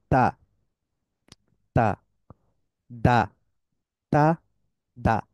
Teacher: tip of দা tongue touches দা রুট of দা upper front teeth hard contact